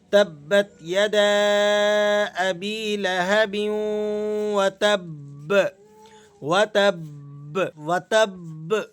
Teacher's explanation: یہ جو اس طرح کا ساؤنڈ نکل رہا ہے ب ب، یہ دراصل اس با کو جو اس متحرک با کے اندر چھپی ہوئی ہے اس کو ادا کرنے کی کوشش کی جاتی ہے. تو مشدد حرف پر آپ جب بھی وقف کریں اس بات کا لحاظ رکھیں کہ اس کے اندر جو چھپا ہوا ایک ساکن حرف ہے اس کو بھی ادا کرنے کی کوشش کریں.